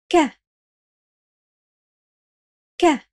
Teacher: The back of your tongue rises and presses against the soft palate at the back of your mouth. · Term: K sound